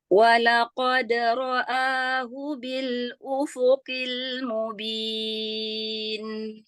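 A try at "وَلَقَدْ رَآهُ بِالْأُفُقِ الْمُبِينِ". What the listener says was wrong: Berikan sifat jahar pada qaf. Ufuqi. Walaqad.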